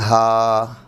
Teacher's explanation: یہ ہا سینے کی انتہا سے، حلق کی طرف سے سینے کی انتہا سے ہا، یہ دو چشمی ہے.